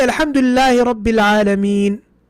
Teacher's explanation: When I say Alhamdulillah Rabbil Alameen, even though in the mushaf there's a fatha on the noon, what did I pronounce? I pronounced a sukun.